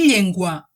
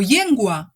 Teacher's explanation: fes que el dors de la llengua, és a dir, la part superior central de la llengua, toqui el paladar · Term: doble ela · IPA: [ʎ]